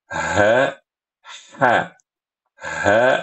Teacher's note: ha kecil ha suaranya itu dari pangkal tenggorokan